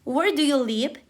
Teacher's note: Goes down because it's a WH question.